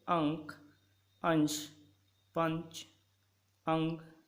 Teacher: अनुस्वार में उच्चारण में नाक से सांस अधिक निकलती है, मुंह से कम निकलती है। मुंह से सांस कम निकलती है, नाक से अधिक, जैसे अंक, अंश, पंच, अंग इत्यादि।